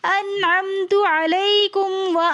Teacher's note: نون ساکن کے بعد حروف حلقی میں سے عین آ رہا ہے، تو اس لیے ہم یہاں پر غنہ اخفا کچھ بھی نہیں کریں گے